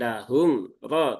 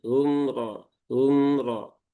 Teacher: sifat pertengahan antara siddah dengan rakah. Maka ee alirkan sedikit ya untuk menunaikan tawasudnya.